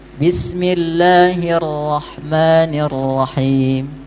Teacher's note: Harusnya cuma satu getarannya